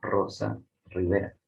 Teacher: hay palabras como Rosa o Rivera que se pronuncia como vibrante